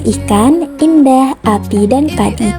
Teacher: vokal I dengan proses pembentukan tinggi atas, depan tak bundar